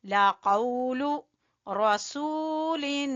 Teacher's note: इन्नाहु लाक़ौलु, लाक़ौ जबान की जड़ से और वाव लीन, लाक़ौलु, लू को छोटा रखना है, लू लंबा नहीं करना